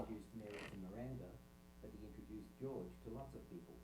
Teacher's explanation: Now, there are different ways you can say any sentence, and one alternative way of saying that sentence would be with an accent that's traditionally been described as a fall rise, where pitch falls and then rises up again.